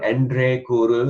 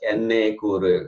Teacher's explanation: the N followed by R sound, that is usually pronounced as N followed by N sound, but I like to pronounce it as N followed by R, because if you learn the correct, the actual words, then you can always change to how the Vaishnava Goshti is chanted.